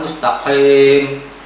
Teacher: Kalau huruf qaf lebih kepada kita masuk ke dalam tenggorokan